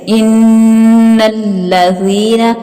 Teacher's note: زال کو باریک پڑا جائے گا اور آگے یا مدہ ہے